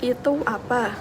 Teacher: bunyi A dan P saling mendekat sehingga terdengar seperti digabung